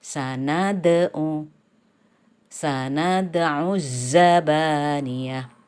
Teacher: Di sini qalqalah suro. Sehingga dalnya dibaca mantul ringan aja.